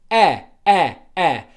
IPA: ɜ